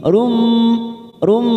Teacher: rum ada dhamma tanwin bertemu mim namanya idgham bi gunnah. Kita tekan 3 ketuk